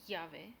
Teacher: The double L is pronounced with the Y sound